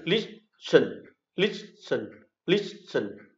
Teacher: dấu trọng âm rơi vào âm tiết thứ nhất là list